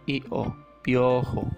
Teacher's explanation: También vocal cerrada con vocal abierta. Se juntan. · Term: diptongo